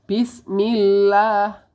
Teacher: ada huruf mad thbii'i atau harakat fathah yang berdiri ini panjangnya adalah dua harakat